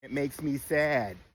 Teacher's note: And you don't tense your a vowel in words like sad.